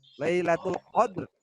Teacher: Dal sukun posisinya di tengah kalimat, cara membacanya dipantulkannya dengan ringan saja ya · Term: Qalqalah Sugro